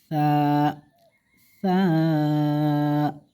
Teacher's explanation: সা মাখরাজ জিহ্বার আগার সামনের উপরে দুই দাঁতের আগার সঙ্গে লাগাই।